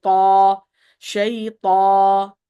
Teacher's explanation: there should be no noon sound when you say ta